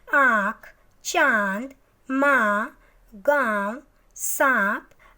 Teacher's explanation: इनका उच्चारण नाक और मुंह से किया जाता है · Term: अनुनासिक